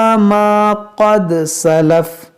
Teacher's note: क़ाफ हुरूफ मुश्तालिया, इसको मोटा करेंगे और दाल में क़लक़ला करेंगे